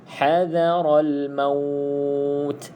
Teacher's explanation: Okey, ha pedas, ra pastikan tebal sebab ra ini adalah ra tafkhim kita panggil. Tafkhim, ra yang kita kena baca tebal, iaitu ra berbaris di atas